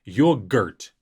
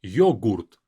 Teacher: GR is together, yogurt. As if there's not a vowel there in between. In Russian, there is a vowel.